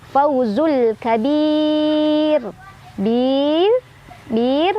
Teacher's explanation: Mad tabi'inya adalah ya sukun sebelumnya kasrah, huruf yang disukunkannya adalah huruf ra, sehingga ini dibaca panjang, boleh 2, boleh 4, boleh 6 harokat ya. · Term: mad arid li sukun